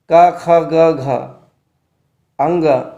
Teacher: तो कंठीय या कोमल वर्ण आपका हो जाएगा कवर्ग। कवर्ग का उच्चारण जो है कंठ से होता है। क ख ग घ अंग, ये कंठीय वर्ण है।